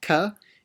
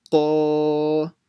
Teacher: Mi, then a qaf, alif with a fatha. Qa, make it full mouth. Not ka, it's qa.